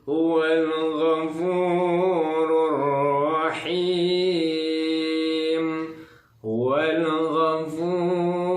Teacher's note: Nah, rur ini alif lam syamsiah. Alif lam syamsiah dibacanya, alif lamnya tidak terbaca langsung ke ro-nya ya.